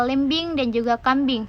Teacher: Fonem vokal I juga memiliki alofon I besar atau tertutup seperti pada kata lembing dan juga kambing. Dengan demikian dapat ditegaskan bahwa I dapat berealisasi ke dalam I kecil atau terbuka dan I besar atau tertutup dalam posisi yang tidak sama.